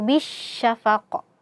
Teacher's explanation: Karena alif lamnya di sini tidak kita anggap keberadaannya. Dan huruf ba langsung kita masukkan ke huruf syin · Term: alif lam syamsiyah